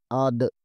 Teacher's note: دال ساکن ہے، اسے تھوڑا سا دبا کر یعنی کلک کلک کر کے پڑھیں گے۔